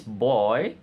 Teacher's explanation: back to front forward glide